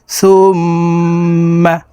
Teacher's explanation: সুম্মা হরকতের বামে মিমের উপরে তাসদি আছে এই কারণে এই সাটি তাশদি মিমের সাথে নাকের বাঁশি থেকে গুন্না করে পড়বো